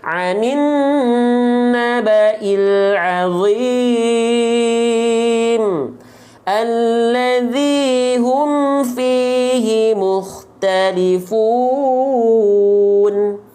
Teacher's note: ketika ujungnya adalah mad aridhi sukun, maka dibacanya harus 4 harokat. Gak boleh tiba-tiba jadi 2 dan gak boleh tiba-tiba jadi 6 harokat.